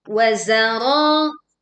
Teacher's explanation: Ada suara surwit tajam juga muncul saat za ini dibaca.